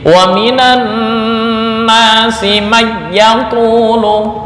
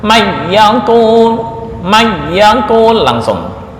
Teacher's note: Ketika ada nun mati atau tanwin bertemu wawu atau ya, di Imam Hafaz itu dibaca idgham bi gunnah. Imam Khalaf menjadi idgham bila gunnah. Jadi wa minan nasi may yaqulu, dibaca bila gunnah, may yaqul langsung.